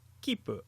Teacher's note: in Japanese there is a brief pause between the sounds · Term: double P sound